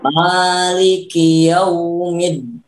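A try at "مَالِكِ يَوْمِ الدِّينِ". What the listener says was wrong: Bedakan antara lin dengan tasdid. Nah, jangan terlalu dihentak. Kalau dihentak kan misalkan Minas syaitonir rajim. Ya, bedakan tasdid dengan lin. Lin artinya lembut. Lembutkan sedikit lagi.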